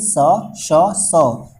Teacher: मतलब इन तीनों स को जब भी बोलेंगे तो किसी भी प्रकार का कोई वाइब्रेशन या कंपन उत्पन्न नहीं होगा। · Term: अघोष